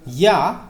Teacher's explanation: प्रकार की ध्वनि है तो ये एक तालव्य ध्वनि है किसकी तालव्य ध्वनि जो तालू की सहायता से बोली जाती है